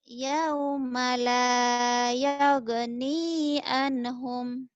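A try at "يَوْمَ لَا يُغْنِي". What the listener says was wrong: Bukan yagni atau yugni. Yauma la yugni.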